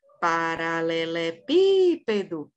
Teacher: nem vai ser a última sílaba que vai ser a tônica nem vai ser a penúltima vai ser a antepenúltima que vai ser a sílaba tônica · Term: proparoxítona